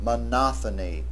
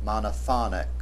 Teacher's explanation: The accent is on the second syllable in the noun form and on the third syllable in the adjectival form.